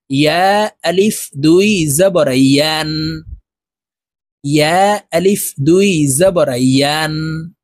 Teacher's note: ইয়ার উচ্চারণ সঠিকভাবে জিহ্বার মধ্যখান থেকে উচ্চারণ করব। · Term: ইয়া হরফ